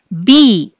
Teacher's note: బి అంటే పెదాలు అడ్డం పడుతున్నాయి గాలి బయటికి రాకుండా